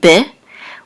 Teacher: this is a bet with a shava, which will make a quick eh sound, be, which means in, be, in.